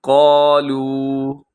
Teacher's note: قاف اس کے اندر موٹا ہے اور اس کے بعد واو مدہ ہے، اسے تھوڑا لمبا کیجیے گا